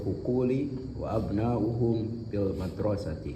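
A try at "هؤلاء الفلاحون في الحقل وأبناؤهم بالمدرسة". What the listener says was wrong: Ahsan tabarakallahu fiik.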